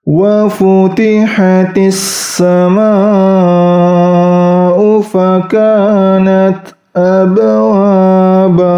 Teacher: ba sukunnya atau qalqalahnya itu ringan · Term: qalqalah sughra